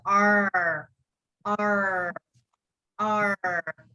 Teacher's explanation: when you're doing american r sound you need to roll your tongue you need to roll your tongue back